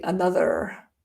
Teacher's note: in rhotic English, it would be another, but not in my accent